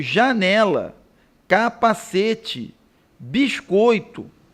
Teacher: possui um acento tônico na penúltima sílaba